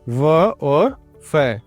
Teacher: इनका उच्चारण दांतों और होठों से किया जाता है। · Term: दंत ओष्ठय